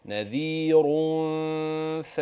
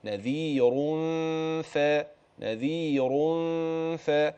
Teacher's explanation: تراعي تفخيم الراء والغنه ترقق تبعا للفاء، يبقى كده نذير ف لكن ما اقولش نذير ف، لا، الغنة لها حكم والراء لها حكم، فأخلي بالي لا يطغى هذا على هذا ولا ينفك هذا عن هذا.